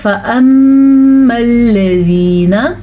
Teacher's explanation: یہ جب بھی نون کے اوپر شد آئے گی، میم کے اوپر شد آئے گی تو سمپل یہاں پہ غنہ پیدا ہوگا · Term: سادہ غنہ